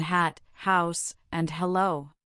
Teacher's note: The standard sound for H is that gentle breathy exhalation. The unvoiced glottle fricative you create it by simply breathing out with a slight constriction in your throat as in hat, house, and hello. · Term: unvoiced glottal fricative